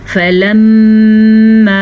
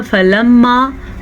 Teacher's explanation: मीम के ऊपर शद आने की वजह से यहाँ पे आपने ज़रूर गुन्ना करना है। अगर कोई इसको पढ़ेगा फलम्मा तो ये हो जाएगा गुन्ने के बग़ैर।